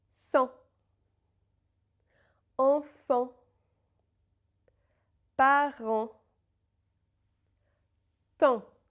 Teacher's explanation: the N or M in this sound, and in all nasal vowels, by the way, is always silent.